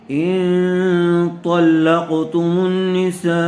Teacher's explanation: طا کو پر کیجیے، پھر آگے قاف ہے، قاف بھی پر ہوگا.